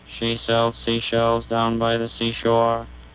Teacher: only the buzz is kept at a constant pitch and therefore we get a monotone effect